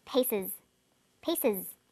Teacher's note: The S on the end is pronounced z because it followed an S sound. · The first pronunciation of the final S is uz. It's pronounced this way after sounds such as s, z, sh, ch and j.